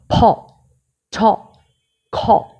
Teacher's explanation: যখন আমরা এই লেটার গুলো উচ্চারণ করব তখন আমাদের ভিতর মুখের ভেতর থেকে বাতাস বের হয়ে আসবে শ্বাসের মধ্যে মুখের মধ্যে একটা আঘাত দিয়ে বাহিরে বাতাস বের হয়ে · যেমন আমরা ফ উচ্চারণ করছি, দুইটা ঠোঁট দিয়ে ভিতর থেকে বাতাস বের করে নিয়ে আসছি, এবং শেষে একটা ছোট্ট করে হ এর মতন উচ্চারণ হচ্ছে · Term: অ্যাসপারেট সাউন্ড